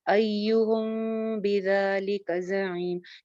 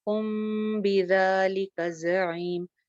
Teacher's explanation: غنہ ہوتا ہے اس میں ہونٹ ٹائٹلی جو ہے وہ بند نہیں ہوتے ، ہم نہیں، ہم ڈھیلے ہونٹوں کے ساتھ، ہم بذالک زعیم،